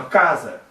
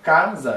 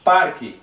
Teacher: A penúltima sílaba é a mais forte. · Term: paroxítona